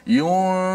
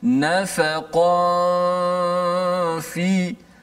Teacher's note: Nun tu mana? Nun dah disembunyikan pada makhraj fa tu. Nun kekalkan pada gunnah saja di khayshum, di hidung. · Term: ikhfa hakiki